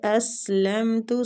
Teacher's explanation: قال اسلمت لرب العالمین، قاف مستعلیہ پور پڑھیں گے، اسلمت سین باریک سیٹی والا